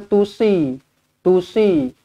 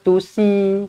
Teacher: huruf s dia tebal sikitlah daripada huruf Sin